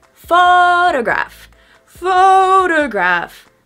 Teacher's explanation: So notice I don't say photo, I say photo, photograph. And the second interesting point for this word is the stress. We stress the first syllable.